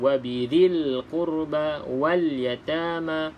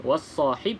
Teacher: Kalau lam yang ada tanda mati, perlu dilafazkan huruf lam tersebut. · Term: alif lam qamariyah